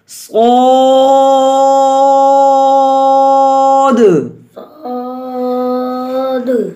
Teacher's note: صو کی واو کی آواز نہ ہو، الف کی آواز ہو اور الف موٹا بھی ہو. اور جب الف کو موٹا کرنے کا طریقہ یہ ہے کہ ہماری زبان کی جڑ بھی اٹھے اور اس کو لمبا بھی کرنا ہے. آسمان کی طرف آواز بلند ہو.